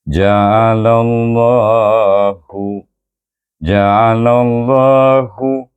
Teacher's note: Dan kita baca dengan tebal sebab lam baris di atas